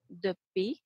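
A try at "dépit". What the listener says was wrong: Oui, prononcez bien l'accent, pronounce the accent, dépi.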